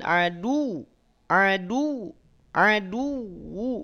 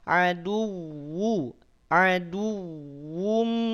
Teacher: yang ditekan adalah wunya bukan dalnya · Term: wau bertasydid